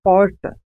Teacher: Nesse caso, há um movimento de retroflexão da língua em direção ao fundo da boca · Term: R retroflexo